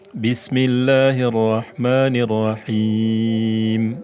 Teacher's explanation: terjadinya mad di akhir bacaan, karena bertemunya dua sukun. Ya dan mim ini sukun. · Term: mad arid lisukun